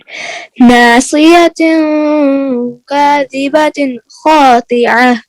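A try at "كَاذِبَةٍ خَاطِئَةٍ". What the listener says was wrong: क़ा निकले, खातिअ, क़ा खातिअ, खा नहीं, क़ा नहीं निकला बेटा, खातिअ, क़ा को फुल साउंड करें, पुर करें।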